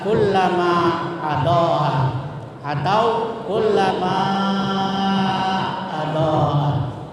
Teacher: Mad itu panjang, jaiz itu boleh, munfasil itu terpisah. Jadi bacanya boleh mad tabi'i seperti mad tabi'i 2 harakat, dan boleh panjangnya seperti mad wajib muttasil, yaitu 2,5 alif atau 5 harakat. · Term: mad jaiz munfasil